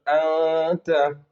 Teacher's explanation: نون ساکن اخفاء حقیقی ہوگا اس لیے کہ نون ساکن کے بعد اخفاء کے 15 حرف تا ثا جیم دال زال ذا سین شین صا ضا طا ظا فا قاف، کاف میں سے تا ہے، اخفاء ہوگا، نون کی آواز کو ناک میں چھپا کر پڑھیں گے